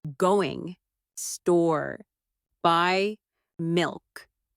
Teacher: For example, say, "I'm going to the store to buy some milk." Notice how certain words are stressed. Going. Store. Buy milk.